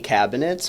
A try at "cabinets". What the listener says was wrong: You don't say cabinets very efficiently. Cabinet. Like there's an I there. You gotta skip over.